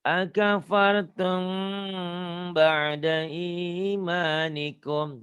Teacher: Ini mimati ketemu ba, tapi bunyinya sama. Ini ikhfa syafawi. Agak bindeng sedikit.